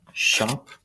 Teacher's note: that o is an ah sound